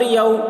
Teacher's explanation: واو ساکن سے پہلے زبر ہے، واولین ہوا، اس لیے واولین کو نرم آواز کے ساتھ جلد پڑھیں